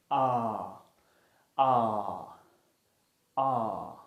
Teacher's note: in this case your tongue is low and at the back of your mouth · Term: open back unrounded vowel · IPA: ɑː